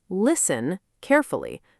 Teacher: Many learners try to pronounce that T hard, saying list-ten, but that sounds unnatural to native ears.